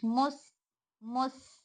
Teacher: سین میں صفت رخاوہ اس لیے آواز کو تھوڑا سا لمبا کریں گے